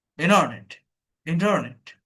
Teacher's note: ট বলতে যাব, বলতে বলতে পড়ে যাচ্ছে, এটা বলে ড্রপ টি। এই যে ইন্টারনেট না, ইন্টারনেটও না, ইন্টারনেট, অর্থাৎ ট মনে করেন পড়ে যাচ্ছে, আপনি টটাকে ধরবেন, পড়ে যাচ্ছে, টেনে তুলতে যাচ্ছেন, সেরকম অবস্থায় ছেড়ে দিচ্ছেন, এটাকে বলে ড্রপ টি।